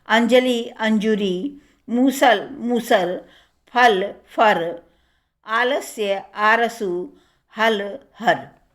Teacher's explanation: भोजपुरी आदि की भाति अवधि में ल के स्थान पर रा हो जाता है